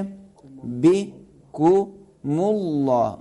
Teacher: मीम को मोटा नहीं करें, मुल लाम को मोटा करेंगे